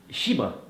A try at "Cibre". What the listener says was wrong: Non. Cibre. Le H se prononce pas.